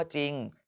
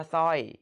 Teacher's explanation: แบบนี้เรียกว่าควบกล้ำไม่แท้ก็ออกเสียงเฉพาะตัวแรก